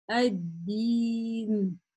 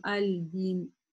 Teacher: лям не читается, а удваивается последующая буква